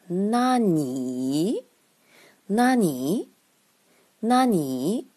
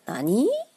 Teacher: 单独使用的时候要降下来再升上去